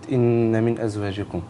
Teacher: الغنة هنا تبقى مقدار حركتين طبعا